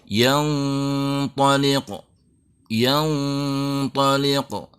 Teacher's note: Kita membaca ikhfanya menebal dengan makhraj yang sudah siap-siap di huruf ta. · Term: tafkhimul gunnah